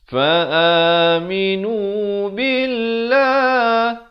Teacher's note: Lafzul jalalah di sini dibaca nipis.